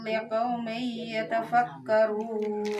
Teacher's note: liqaumi bagusnya ditahan ya, kan idgham